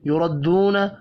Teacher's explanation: یا کے اوپر کھڑی زبر ہے، ایک الف کے برابر کھینچ کر پڑھنا ہے. یردون، را کو زبر کی وجہ سے پر پڑھنا ہے، واو مدہ ایک الف کے برابر کھینچ کر پڑھیں گے.